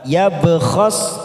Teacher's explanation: ba sukun qalqalah sugro kita pantulkan